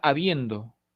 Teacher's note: el acento se encuentra en la segunda posición silábica esto es la penúltima sílaba no lleva tilde porque la última sílaba carece de coda pero